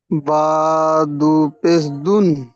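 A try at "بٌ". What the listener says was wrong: বুন। দুন কেন হবে? বা আর দালের কোনো মিল আছে বলেন? তাহলে বা দু পেশ বুন হবে, দুন কেন হবে?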